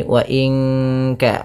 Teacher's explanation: Nun mati bertemu kaf, suaranya disamarkan ke kaf, ya, terdengar bunyi wa in ka, langsung kepada makhraj huruf ka, yang dimana kaf makhrajnya pangkal lidah kita, di pangkal lidah.